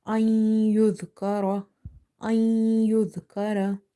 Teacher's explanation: For letter ya, we are doing the merging, which is idgham with gunna.